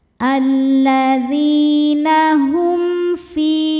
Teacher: Lalu ada hukum izhar syafawi. Sebab mim sukun menghadapi huruf yang bukan mim ataupun ba. Cara bacanya mim sukun dibaca dengan jelas.